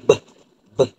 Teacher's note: Letusan bersuara adalah seperti letusan bilabial di mana dua bibir atas dan bawah akan bersentuh